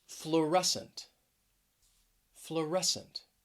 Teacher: stress is on that second syllable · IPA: flʊˈrɛs ənt